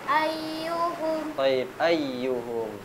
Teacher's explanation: huruf ya ketika bertasdid ditekan lebih tinggi suaranya